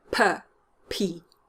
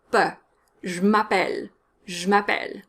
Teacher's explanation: You want to get rid of that puff of air in French.